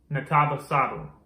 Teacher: that penultimate syllable is going to get that accent.